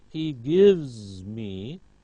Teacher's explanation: Notice v, voiced, so z